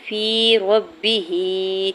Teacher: ابراہیم، حمزہ کی زیر کو با ساکن کے ساتھ ملاتے ہوئے قلقلہ کریں گے، را کے اوپر کھڑی زبر، ہا کے نیچے کھڑی زیر، دو حرکت کے برابر کھینچ کے ادا کریں گے۔ فی ربہ، یا ساکن سے پہلے فا کے نیچے زیر ہے یا مدہ ہو رہا ہے، 2 حرکت کھینچ کے ادا کریں گے۔